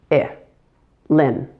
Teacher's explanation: The I in lin is a short, relaxed I. Lin. Notice how relaxed my mouth is?